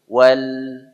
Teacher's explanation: dia punya sifat bainiah ya antara rakhaah dan syiddah di tengah-tengah ada sifat bainiah ya mengalir tapi sedikit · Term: sifat bainiyah